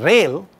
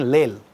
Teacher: these two sounds are liquids, therefore this interchange